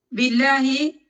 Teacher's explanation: ഈ ബി ഉള്ളത് കൊണ്ടാണ് ലാമിന് ലൈറ്റ് ആയിട്ട് പ്രൊനൗൺസ് ചെയ്യുന്നത്. ബി അവിടെ ഉള്ളത് കൊണ്ടാണ് ലാമ് ലൈറ്റ് ആയിട്ട് പ്രൊനൗൺസ് ചെയ്യുക.